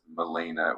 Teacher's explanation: So Melina in the context of A3 like the Greek word for black or dark is spelled M E L A I N A. And in an American accent, it's pronounced as Melena with the emphasis on the second syllable